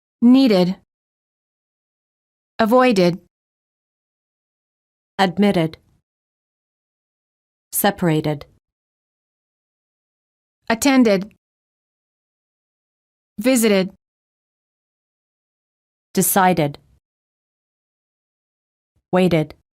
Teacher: If the last letter of the word is spelled with a D or a T, the ED is pronounced as a separate syllable, id.